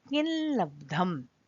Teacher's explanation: एक उदाहरण ल का भी हम देखते हैं कि अनुस्वार के बाद अगर ल आता है, देखिए यहाँ किम लब्धम में अनुस्वार के बाद ल आ रहा है, तो इस अनुस्वार को पर सवर्ण अनुनासिक आदेश में ल हो जाएगा और यहाँ इस ल के ठीक पहले एक ल और जुड़ेगा और हमारा पद बनेगा किल्लब्धम।